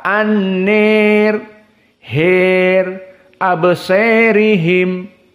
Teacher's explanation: Alif yang datang sebelum ra yang majrur, itu pun dibaca al-imalah al-kubra.